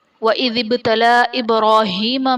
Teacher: با حرف قلقلہ ساکن ہے تو یہاں پر قلقلہ خوب ظاہر کریں گے۔ وَإِذِ ابْتَلَى إِبْرَاهِيمَ میں لام پر کھڑا زبر ہے جو کہ الف مدہ کے قائم مقام ہے اور حرف مدہ کے بعد حمزہ دوسرے کلمہ میں آ رہا ہے تو یہاں پر مد منفصل کا قاعدہ ہوگا۔